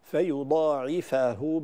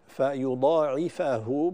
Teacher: كذلك من ذا الذي يقرض الله قرضا حسنا، نحن نقرأ برواية حفص فيضاعفه بفتح الفاء وليس بضمها كما في غيرها من الروايات